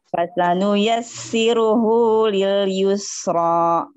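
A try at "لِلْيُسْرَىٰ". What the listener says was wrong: Yusro. Jangan ro. Jangan dikasih hamzah.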